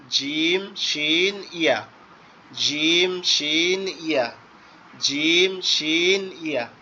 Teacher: জিহ্বার মধ্যকান উপরের তালুর সঙ্গে লাগায়া